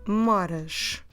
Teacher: we need to stress the second to last syllable so i'm not stressing the ending i'm stressing exactly the bit